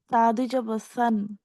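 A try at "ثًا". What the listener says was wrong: সান এরকম উচ্চারণটা হলে সিন চলে হয়ে যাবে, সেটা সা যেমন সামারুন, সামারুন এটা হচ্ছে কি সাইর। সালাম, সালাম এটা হচ্ছে সিনের উচ্চারণ। সলাত এটা হচ্ছে কি সদের উচ্চারণ। সাজারুন এটা হচ্ছে শিনের উচ্চারণ। হ্যাঁ, আমি তিনটা উচ্চারণই করতেছি, আপনি খেয়াল করুন। সামারুন, সালাম, সলাত, সাজারুন। সামার, সালাম, সলাত, সাজার।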